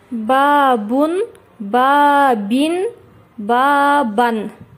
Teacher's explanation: Танвин бул эки домма, эки касра, эки фатха келген учурда акырына ны тыбышы кошулуп окулат.